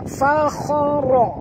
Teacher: jangan baca fakha, ya, tebal pada kha, ya, huruf isti'la. Fakhara, ra pun tebal, ra baris atas kena baca tebal.